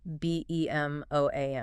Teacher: 2 syllables. Stress on the second.